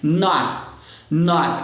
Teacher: você segura esse T no céu da boca, você não solta